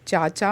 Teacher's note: वस्तुतः च वर्ग की ध्वनियां तालव्य वर्ग के अंतर्गत आती हैं।